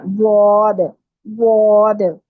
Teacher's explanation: जिस तरफ आपकी जुबान करवट ले लेती है इजीली उस साइड पे आपने जुबान की करवट ऊपर वाली जो दाढ़ें हैं पिछली उनकी जड़ को लगानी है